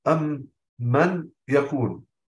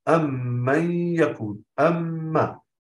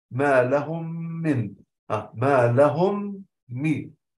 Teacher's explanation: أن الإدغام الشفوي يصاحب غنة مطولة مقدارها حركتين، لابد أن يكون مصاحب لهذا الإدغام غنة مقدارها حركتين، نحو أم من يكون.